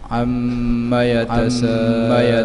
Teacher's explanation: Yatasa dibaca dengan 4 atau 5 harkat. Mak wajib muttasil. · idgham dengan dengung yang bertasydid atau wajib didengungkan qadar panjang 2 atau 3 harkat. Yatasa dibaca dengan 4 atau 5 harkat. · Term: idgham musyaddad